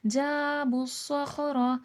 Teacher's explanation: صاد کو موٹا کر کے پڑھا جائے گا کیونکہ موٹے حرفوں میں سے حرف مستعالیہ میں سے ، را کو بھی موٹا کر کے پڑھا جائے گا، بالواد،